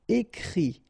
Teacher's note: the IT, phonetically you pronounce I because final T is not pronounced